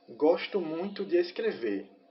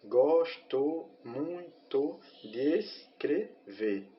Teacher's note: Vocês percebem que o D com o ES foi feita a elisão, né? Que é a junção dessas duas sílabas numa só, justamente porque no cordel tem essa questão desde a sua origem, né?